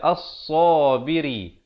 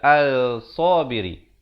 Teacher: Lam itu tidak kedengaran ya. Alif lam syamsiah.